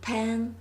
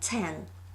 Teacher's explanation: Let's compare sounds p and t in pen and ten. So, p is bilabial, t is folingual, and all the other features are the same. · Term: single diphonological opposition